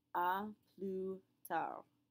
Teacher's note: we pronounce neither the S nor the D